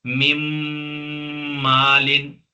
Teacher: नून मीम के साथ मिलेगा लेकिन साथ में गुना भी होगा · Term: इदगाम